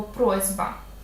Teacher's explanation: перед дзвінким приголосним б глухий приголосний с або сь в нашому варіанті буде уподібнюватися до дзвінкого і заміниться на свою дзвінку пару це називається асиміляція за дзвінкістю в чому її суть ти бачиш · Ми щойно це озвучили подивимося ще раз на слово просьба с с в нашому випадку перед б дзвінким уподібниться до з свого дзвінкого відповідника